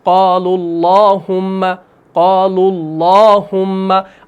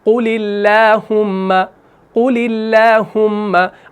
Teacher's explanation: चुनांचे क़ालुल्लाहुम्मा में तगलीज़ है, यानी तफ़ख़ीम होगी, और क़ुलिल्लाहुम्मा में तरक़ीक़ होगी